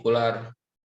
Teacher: maka pengucapan E dalam bahasa Indonesia itu menjadi pengucapan U dalam orang Arab